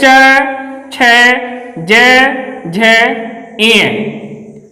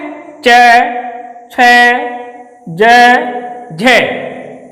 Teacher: जब हम च बोलते हैं तो हमारा जो जीभ होता है ऊपर तालु को टच करता है, इसलिए इसका नाम पड़ा है तालव्य व्यंजन।